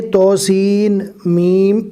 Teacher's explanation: سین کو میم کے ساتھ ملانا ہے، توسین میم، اس طرح نہیں پڑھنا، سیم میم، میم کے اوپر تشدید ہے اس لیے سین کو میم کے ساتھ ملایا جائے گا۔ تو کو کم کھینچنا ہے اس لیے کہ اس کے اوپر کھڑا زبر ہے، سین اور میم کو تھوڑا زیادہ کھینچنا ہے اس لیے کہ اس کے اوپر مد ہے۔